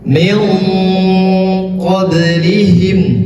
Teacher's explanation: maka nunnya disamarkan, tetapi bersiap-siap untuk mengucapkan huruf qaf. Min, jadi qafnya itu agak tebal. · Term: huruf ikhfa